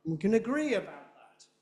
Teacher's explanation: This is no stress until you get to gree. Gree is much, much bigger and louder than the other words.